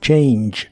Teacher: el verbo cambiar en el presente de inglés es change la a se pronuncia como e i y la g del final se pronuncia como J J que